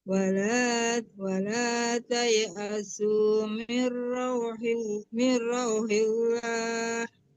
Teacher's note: Lam Allah itu tebalnya kalau sebelum lam Allah berharakat fathah dan dhammah. Tapi kalau berharakat kasrah, lam Allahnya ditipiskan.